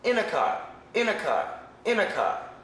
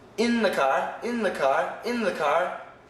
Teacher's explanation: So in a car, there's only one N sound. In the car, there's two N sounds.